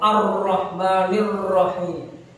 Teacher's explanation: ro terkadang dibacanya terlalu getar. Ya, getarnya terlalu ar-rahmanir rahim.